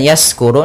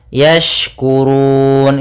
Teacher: hati-hati dalam pelafalan shin, jangan sampai terdengar dengan sin. Apabila membacanya yaskuru, nanti maknanya berubah.